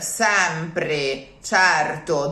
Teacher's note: the final vowels, they're still E's or O's, but they are weak. So for sure, they cannot be open because they're weak.